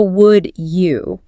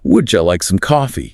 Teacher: when a D and a Y collide in the human mouth, the physics of the palate force them to mutate into a J sound, like a J in judge. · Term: palatalization